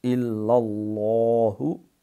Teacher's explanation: لفظ اللہ کا لام جب اس سے پہلے زبر اور پیش ہو تو اس کو تفخیم سے موٹا کر کے پر کر کے پڑھتے ہیں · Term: لام موٹا